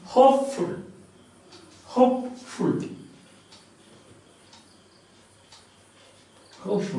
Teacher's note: Now spondee, again two syllables, two stressed ones.